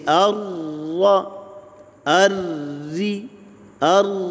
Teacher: مشدد را کی ادائیگی میں زبان کی نوک تالو کے ساتھ اچھی طرح لگتی ہے